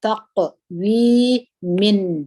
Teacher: ژبه د تالو سره ومښلوئ، مخرج ټینګ کړي د نون ساکن یا د تنوین د نون. تقویمن، تکذیبن، تکذیبن، کاف باندې همس وکړئ، دلته پر ذال باندې زیر دی یا ساکنه ده، او د نون مکمل وایست.